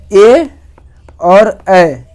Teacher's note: ए और ए जो होता है वह कंठ तालु की सहायता से बोला जाता है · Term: कंठ तालव्य